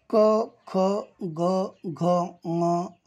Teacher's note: क ख ग घ म या वर्णांच उच्चार स्थान कंठ आहे